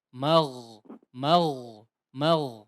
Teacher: di huruf ghain yang sukun tadi dipertebal sedikit